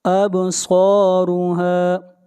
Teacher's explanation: صاد کو موٹا پڑھیں گے، صاد حروف استعلاء میں سے ہے اور را کو موٹا پڑھیں گے، را کے اوپر پیش ہے، جہاں بھی را کے اوپر پیش یا زبر ہوگی را کو موٹا پڑھا جائے گا اور جہاں زیر ہوگی را کو باریک پڑھا جائے گا۔